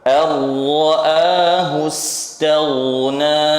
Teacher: Idgham bila gunnah. Mumtaz. Jadi suara seluruhnya dari rongga mulut. Yang namanya saja bila gunnah, berarti enggak ada gunnahnya.